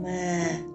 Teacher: for this tone, you should keep your voice at low level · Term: dấu huyền